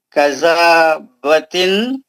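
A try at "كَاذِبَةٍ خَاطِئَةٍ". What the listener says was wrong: کاذبتن, مد اصلی ہے وہ. کاذبتن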